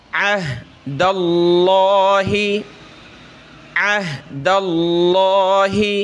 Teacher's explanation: یہاں لفظ اللہ سے پہلے زبر ہے دال کے اوپر تو لفظ اللہ کو موٹا کریں گے